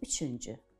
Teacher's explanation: ü saiti incədir, dodaqlanandır və artırdığımız şəkilçi də incə. dodaqlanan saitli şəkilçidir.